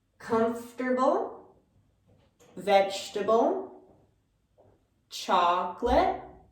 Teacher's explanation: so we have this repetitive sound the schwa in english